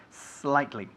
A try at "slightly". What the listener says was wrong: Eso es. Because otherwise you have a little glottal stop here. You say slightly, slightly, slightly. Let's emphasize that S sound. The S plus consonant is never pronounced S, okay? We don't say España. We say Spain. We don't say es slightly. We say slightly.